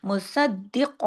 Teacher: کاف کو موٹا کرنا ہے، اس کو ڈنڈے والے کاف کی طرح نہیں پڑھنا.